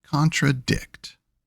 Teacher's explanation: For anapest, it's 2 unstressed, then a stressed.